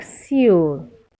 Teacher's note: the S sound is an unvoiced sound that is you don't get a vibration from the vocal cord when you're pronouncing them